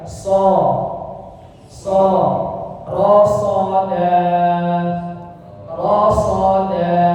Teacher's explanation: Cuma lidah saja yang digerakkannya. Ujung lidah ke belakang gigi seri bawah, kemudian pangkal lidahnya diangkat.